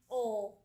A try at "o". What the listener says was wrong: 힘 빠졌어. 그렇게 세게 힘 소리 내면 안 되지.